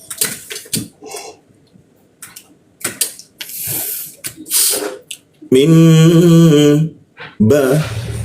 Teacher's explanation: nun mati bertemu ba maka ee muncul mim ya. Kita tahan dukkan di huruf mimnya ini. Setelah itu baru dibaca bnya mim ba.